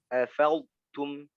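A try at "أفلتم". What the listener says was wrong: Jangan tum masih ketebalan. Afaltum. Masih ketebalan. Afaltu. Jadi dia istifal. Jangan tu.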